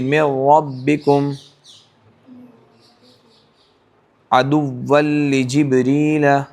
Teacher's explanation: ادغام بلا غنہ ہے جو لام اور را میں ہوتا ہے, جس میں بالکل بھی غنہ نہیں ہوگا